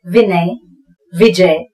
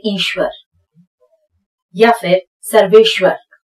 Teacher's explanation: जब आधे श के बाद जब व आता है श्व, तो फिर हमारे होठ गोल होते हैं